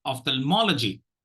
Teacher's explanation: You will be tempted to give more stress on thal, but don't do that. Okay, ophthalmology, because thal is a CVC syllable.